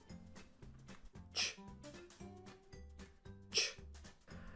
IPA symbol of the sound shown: tʃ